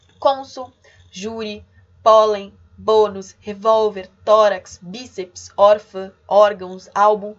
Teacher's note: são paroxítonas, em primeiro lugar, ou seja, penúltima sílaba é a tônica